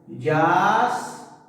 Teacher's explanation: ¿Y dónde está la mayor fuerza de voz, profesor? Acá, en la última sílaba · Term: palabra aguda